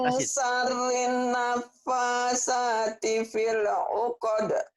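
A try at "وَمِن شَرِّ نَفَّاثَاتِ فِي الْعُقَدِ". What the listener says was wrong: Bagus, tinggal shin-nya aja. Wa min syarrin, gunanya ditahan. Wa min syarrin nafasati fil 'uqad.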